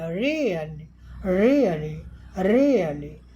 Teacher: ये है, यहाँ देख लीजिए, यहाँ एक्सेंट भी लगा है, यानी ये हाई पिच में बोला गया है